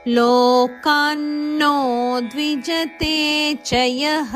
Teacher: ಲೋ ದೀರ್ಘ, ಕಾ ದೀರ್ಘ, ನೋ ನಕ್ಕೆ ನದ ಒತ್ತು. ಲೋಕಾನ್ನೋ ಇದು ನೋ ಸ ದೀರ್ಘಾಕ್ಷರ.